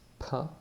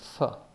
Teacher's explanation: instead of closing your lips, p, you do the same kind of a pressured breath out, p, but without closing those lips, and therefore the sound will be f, p, f. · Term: soft pronunciation